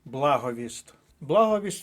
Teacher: три різних словнички підтвердили що наголос на першому складі